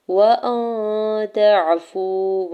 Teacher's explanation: واو ساکن سے پہلے فا کے اوپر پیش ہے اور واو ساکن کے اوپر مد منفصل بھی ہے، تو 4 سے 5 حرکت کھینچ کے ادا کرنا ہے